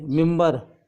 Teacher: जब ये नून गुन्ना बे से पहले आता है तो मीम की आवाज़ देता है